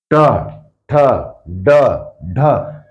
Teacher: मुर्धन्य जीभ मुड़ के ऊपर जाएगी जीभ मुड़ के ऊपर जाएगी ट ठ यहां पर क्या होगा